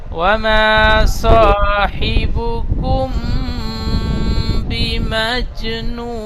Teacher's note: জিমকে কলকলা করে আগের অক্ষরের সাথে মিলিয়ে পড়তে হয়। এখানে কুম একালি গুণনা করবেন, এখানে জিম কলকলা করবেন।